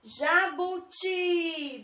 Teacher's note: Demorei no ti. Então, a última é a sílaba tônica